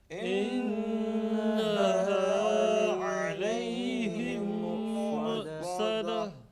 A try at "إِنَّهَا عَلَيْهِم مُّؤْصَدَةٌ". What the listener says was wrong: Remember here, medium jerk should be applied, but ayn should not be there. Okay, there should be no trace of ayn sound. Soft jerk.